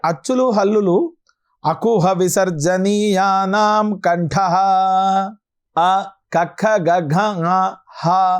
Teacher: అకుహ విసర్జనీయానాం కంఠః ఇవి కంఠము నుండి పలకబడుతూ ఉన్నాయి